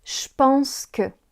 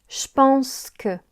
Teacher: Quand on a le pronom je devant un verbe qui commence par le son \p\ alors le son \ʒ\ se transforme en \ʃ\, Je pense devient "chpense". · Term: contraction